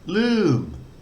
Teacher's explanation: This is the mo-ma M, and it's got a mid-tone